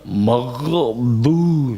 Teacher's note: Pokoknya pas membaca itu ghainnya itu terlalu ditekan. Seakan-akan itu adalah qalqalah. Padahal itu bukan qalqalah, tidak ada qalqalah ghain itu.